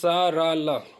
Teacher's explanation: ये 3 वर्ण हैं जो दंतमूल मसोड़ा या वस् से बोले जाते हैं